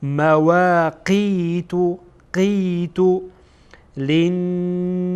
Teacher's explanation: قسمت اخیر زبان که به حلقوم نزدیک هست، به قسمت کام بالا، قسمت گوشتی کام بالا یعنی قسمت اخیر کام بالا برخورد میکنه و قاف ادا میشه